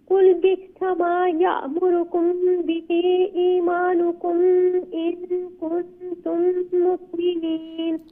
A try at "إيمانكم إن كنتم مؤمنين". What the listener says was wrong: إيمانكم there is no غنة there that's إظهار ميم ساكن قل بئس ما يأمركم به إيمانكم إن كنتم مؤمنين okay